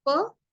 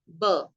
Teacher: On the contrary, if you just speak per and then you speak b, there is a little vibrato or the vibration sound through the vocal cords.